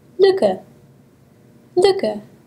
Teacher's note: Using the organs of speech to pronounce this, raise the dorsum of the tongue to the front of the oral cavity while the lips are rounded.